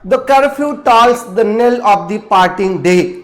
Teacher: An unstressed syllable is followed by a stressed syllable, इसको आयम्ब कहा जाता है।